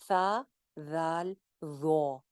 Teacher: सा, जाल, ज़ो, तीनों लेटर्स वहीं ऊपर वाले दो दांतों के किनारे से निकलते हैं। ज़ो जो है इनमें से वो मोटा है, जाल और सा बारीक है।